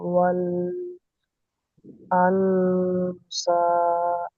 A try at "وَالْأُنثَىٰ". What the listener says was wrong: আনসা নেই, উনসা।